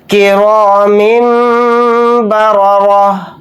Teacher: ان دونوں را کو موٹا یعنی پر پڑھیں گے کیونکہ دونوں را کے اوپر زبر آ رہا ہے · ہے تو یہاں پر ہم غنہ کر کے پڑھیں گے، یعنی اس میم کو بڑے میم کو ملا کر چھوٹے میم میں غنہ کے ساتھ پڑھیں گے ، اس طرح سے غنہ کریں گے کرام بررہ، ان دونوں